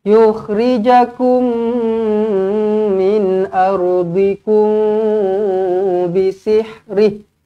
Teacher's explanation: Yuridu ay yukhrijakum, mim kosong bertemu mim sabdu idgham mithlain saghir. Okey, jumpa dengan mim, rapatkan bibir, dengungkan 2 harakat.